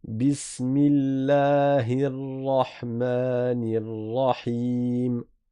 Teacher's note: Il n'y a pas de roulage de ra